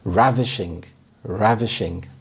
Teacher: The stress is on the first syllable, and this means stunningly beautiful.